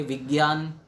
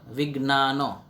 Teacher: કેટલાક લોકો જ્ઞ એમાં ગ અને ય આ પ્રમાણે બોલે છે, એટલે કે વિજ્ઞાન, જ્યારે ગુજરાતમાં તે જ શબ્દ વિજ્ઞાન આ પ્રમાણે ઉચ્ચારવામાં આવે છે.